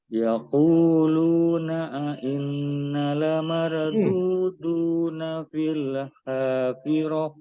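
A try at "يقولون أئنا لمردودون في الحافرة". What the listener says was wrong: Ya, nanya yang kurang panjang.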